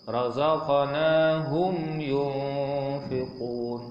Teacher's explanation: Mim mati bertemu selain dengan mim dan ba, semuanya izhar syafawi. Maknanya kita zahirkan sebutan mim mati tanpa dengung ya.